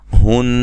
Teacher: ہن نون مشدد پہ غنہ ضروری ہے